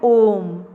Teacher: तो हम ओ बहुत लंबा ले जाते हैं। थोड़ा ज्यादा समय लगाते हैं उसमें। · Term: प्लुत स्वर